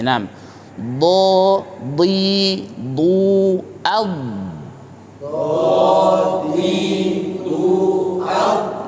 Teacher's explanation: huruf do ini memiliki sifat istitolah, di mana itu suaranya memanjang ya, dari tepi sampai ke ujung lidah.